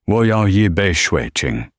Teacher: His third tone on shui, water, was lazy, dipping too low. He sounded like a textbook, not a native speaker.